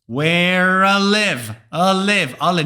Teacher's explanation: the northern English accent usually does not say the I sound and instead says Ah